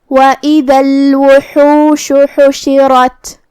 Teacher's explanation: را پہ زبر ہے تو را کا حکم ہے تفخیم، ہم اسے بھاری آواز میں پڑھیں گے